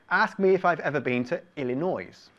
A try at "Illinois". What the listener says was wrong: Illinois, no, it's Illinois. It's Illinois, the S, we don't pronounce the S. Illinois. Illinois.